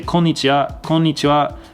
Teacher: like you barely hear that W, almost like it's not even there. That's just like a slight nuance in Japanese pronunciation.